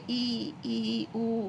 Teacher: संवृत स्वर में मुख द्वार लगभग बंद रहता है, जैसे कि हम मतलब मुख द्वार अधिकतर बंद ही रहेगा, बंद मतलब थोड़ा सा मुंह खोलने पर ही भूल जाएगा, जैसे कि ई, उ, ज़्यादा मुंह खोलना नहीं पड़ेगा, बहुत कम मुंह खोलना पड़ेगा, ठीक है।